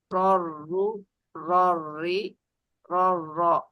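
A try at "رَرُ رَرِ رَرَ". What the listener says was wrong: Nah, bagian rori coba lebih ditipisin lagi. Jangan ikut tebal. Rori, rori gitu.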